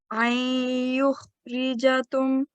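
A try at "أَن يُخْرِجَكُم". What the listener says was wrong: This is a kaf. Yeah? An yukhrijakum.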